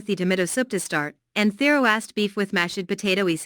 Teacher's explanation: tomato soup, roast beef and mashed potatoes are compound words. The stress falls on the second word in each phrase.